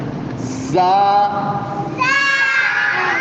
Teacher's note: اب آگے جو زا ہے اس میں زبان اوپر نہیں لگانی، اس میں سیٹی کی آواز دینی ہے